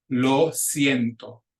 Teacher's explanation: our first diphthong that I.E together but each vowel still makes its pure sounds